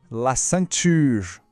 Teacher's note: Aqui temos outro som nasal, o an. A gente pronuncia como se fosse an, saindo pelo nariz.